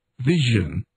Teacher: the voiced palatal fricative as in vision